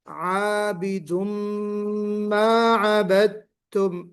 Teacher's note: इदगाम है, इदगाम कामिल मअल गुन्ना, ये इदगाम कामिल है